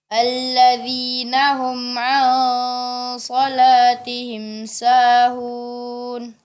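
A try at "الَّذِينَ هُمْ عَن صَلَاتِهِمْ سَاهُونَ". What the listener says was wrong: Iya, kemudian huruf ain sebelum menebalkannya dijelaskan dulu. Tinggal lagi menjelaskan harokat-harokat seperti a, dibuka mulutnya ketika ada fathah, a.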